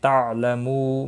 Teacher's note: مو واو مدہ ہے، اس کو بھی ایک الف کے برابر کھینچ کر پڑھیں گے۔ اور وقف کی صورت میں نون ساکن پڑھا جائے گا، وقف بالاسکان ہوگا، مد العارض وقفی ہوگا، 3 سے 5 الف کے برابر کھینچ کر وقف کریں گے۔